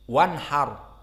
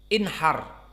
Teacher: jika dia disambung dengan waw sekarang hilang, tasqutu. Wanhar. Namun jika tanpa waw misalnya di awal jumlah inhar dibaca hamzahnya. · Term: hamzah al-wasl